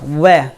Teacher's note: तो दंतोष्ठीय व्यंजन हमारे क्या है, एक तो हमारा है वह, क्या है वह, वह में क्या होगा, हमारा निचला वाला होठ ऊपर जाकर मिलेगा, वह हम कहेंगे वह, तो निचला वाला होठ हमारा ऊपर जाकर दांतों से मिलेगा